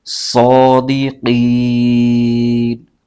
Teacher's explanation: یہاں پر ایک قاعدہ اور ہو رہا ہے، حروف مدہ کے بعد عارضی سکون آ جائے، یعنی کوئی حرف وقف کی وجہ سے ساکن ہو جائے، یہ نون وقف کی وجہ سے ساکن ہو رہا ہے اور یہ حروف مدہ ہے، حروف مدہ کے بعد عارضی سکون آ جائے تو مد عارض ہوگا، اس کو 3 الف کی مقدار لمبا کھینچ کے پڑھیں گے